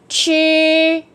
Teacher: uốn lưỡi và bật hơi ra